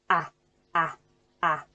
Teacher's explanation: keeping the tongue really low in the mouth and opening the jaw up really wide